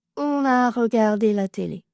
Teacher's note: On fait toujours la liaison en n quand on est sujet.